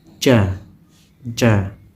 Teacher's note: cara bacanya ada di tengah lidah lidah bagian tengah diangkat ke langit-langit